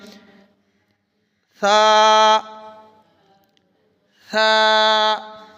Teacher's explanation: سین والی آواز پیدا نہ ہو بلکہ ثا ڈھیلا سا زبان باہر نکالیں